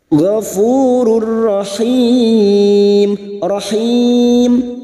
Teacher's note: bertemunya Mad dengan huruf hidup yang dibaca waqaf Mad Arid sukun empat harakat kita panjangkan · nun sukun atau tanwin yang bertemu dengan huruf lam dan huruf ro namanya Idam Bil guna hanya masuk tanpa mendengung tanpa ditahan lama-lama gofururahim rahim bertemunya Mad dengan huruf hidup yang